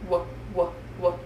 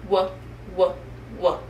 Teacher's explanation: For this sound, we start with our lips in a tight circle and then we open them up a little bit just like a fish. W, W, W. This sound is a voice sound, which means that you should feel some buzzing in your throat. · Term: W sound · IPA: /w/